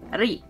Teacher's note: It's a mix of R and L together almost into one type of syllable.